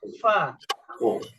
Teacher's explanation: fa ini juga dia sifatnya itu dihembuskan.